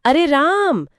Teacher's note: वहां जो ध्वनि बीच में खींचती चली जाती है, वही प्लुत स्वर है